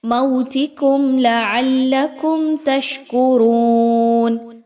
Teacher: موتکم لعلکم تشکرون، را واو پیش رو، واو مدہ ہے، 1 سے 2 الف کے برابر پڑھیں گے، را کے اوپر پیش ہے اس لیے اس را کو پر کر کے پڑھیں گے